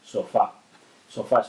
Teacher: el mayor golpe de voz lo lleva en fa en la sílaba final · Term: palabras agudas